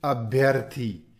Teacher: ई य में बदला हुआ मिलेगा और इसके आगे जो स्वर होगा वो उसमें मिल जाएगा